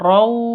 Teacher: Tanwin bertemu dengan wawu, cara bacanya masuk ke wawu, raw seperti itu disertai dengung 2 ketuk. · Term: idgham bi gunnah